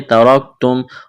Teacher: ترکتم را کو موٹا کرنا ہے